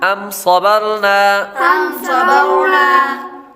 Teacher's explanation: میم ساکن کے بعد با اور میم کے علاوہ کوئی اور حرف آ رہا ہے تو غنہ نہیں کریں گے، اظہار شفوی کا قاعدہ لگے گا۔ صاد حروف مستعلیہ میں سے ہے، اس لیے اس کو پر پڑھیں گے۔ · را ساکن سے پہلے حرف یعنی با پر زبر ہے تو را کو پر پڑھیں گے۔